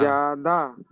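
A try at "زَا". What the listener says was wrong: তাহলে জাটা একালি পরিমাণ টানতে হবে, ওটা একালিপ টান আছে, তাহলে একটু বেশি করে টানেন, যা। দাল জাবার দা, এটা হারাকাতের পর টান দেওয়া যাবে না, তাহলে এটা টান হবে। তাহলে আপনি রিডিং পড়ার সময় এবারে জাটা টান দেবেন, দাটা টান দেবেন না, একবার পড়ে শোনান আমাকে।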